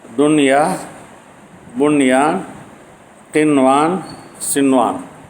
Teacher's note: அடுத்த கலிமாவுல வந்தாதான் இத்ஹாம் செய்யலாம் துன்யா ஒரு கலிமா துன் ஒரு கலிமா ஒரே கலிமாவுல வந்து இத்ஹாம் பில்ஹுன்னாவுடையும் சாக்கினுக்கு பின்னால வந்தா இத்ஹாம் செய்யாமல் வெளிப்படுத்தியே ஓத வேண்டும்